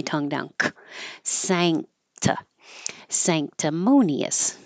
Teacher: so the N will sound like a NG combination when it's before for a k or a g